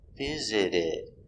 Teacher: the t in visit is between vowels visited so the t is pronounced as a d